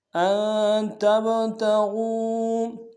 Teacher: نون ساکن کے سامنے لانا ہے، یہاں پہ غنہ کریں گے، تا کو با کے سامنے لانا، با حرف قلقلہ سے قلقلہ کریں گے